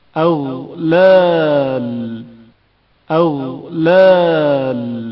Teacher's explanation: غین کی آواز جریان رکھتی ہے اور اچانک منقطع نہیں ہوتی. اغلال اغلال غین کے تلفظ کے وقت نظام آواز کی حالت کو مشاہدہ کریں.